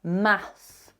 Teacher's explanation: you've got to make your unvoiced TH, and then you've got to pull the tongue in to close your teeth to make that S